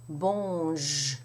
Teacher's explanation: So you have bon, and then you have the sound j, which is similar to the J sound in judge, for example, but there's no little D in front. It's more like a ZH type sound.